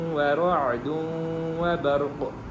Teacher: آخر میں قاف کے اوپر ساکن ہے وقف کی وجہ سے، تو قاف کے اوپر قلقلہ ہوگا